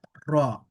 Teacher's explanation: এই র অক্ষরের মূল যে বিষয়টি সেটি হল ফাতহার উচ্চারণে আকার পড়া যাবে না